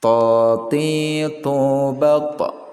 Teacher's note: Dipantulkan ya, karena ya to ini merupakan bagian dari huruf qalqalah